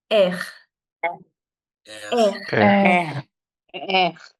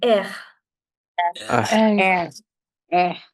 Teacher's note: French is a rough R sound which comes from the back of your throat.